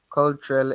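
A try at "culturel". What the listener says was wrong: why do you say call? A U is what sound? In the alphabet, the U is what in French?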